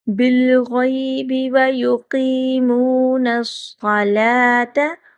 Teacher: قاف کو تھوڑا سا لمبا کریں گے، موٹا کر کے پڑھیں گے